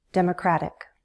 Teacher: And I'm flapping my T, it sounds like a D.